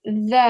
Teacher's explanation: You get the tip of the tongue and you place it or you touch it against the bottom part of the top teeth.